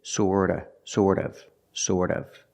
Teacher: the T in sort of is pronounced with a fast D